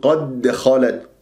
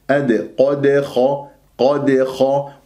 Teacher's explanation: الدال مقلقلة قلقلة صغرى لأنها في وسط الكلام ، لن أقف عليها، أنا راح أربطها مع كلمة خلت، فننتبه